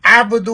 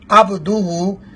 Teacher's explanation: عبدہ عین کے ساتھ ہے, اور لوگ جو پڑھتے ہیں وہ الف کے ساتھ پڑھتے ہیں یا حمزہ کے ساتھ پڑھتے ہیں عبدہ, جو کہ غلط ہے.